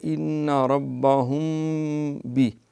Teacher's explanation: یہ اخفاء شفوی ہوتا ہے، میم کے بعد جب با آ جائے